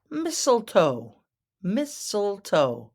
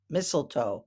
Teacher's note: That first T is silent.